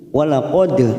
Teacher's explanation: Walaqad dal sukun qalqalah sugro kita pantulkan